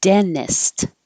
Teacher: you can drop this middle t because it's following the n